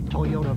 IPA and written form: tɔɪˈoʊtə (Toyota)